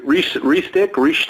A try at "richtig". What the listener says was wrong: Richtig. Richtig. There's no S in the middle. Tick. It's a very soft K.